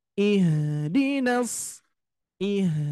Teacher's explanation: huruf H Itu posisinya ada di pangkal tenggorokan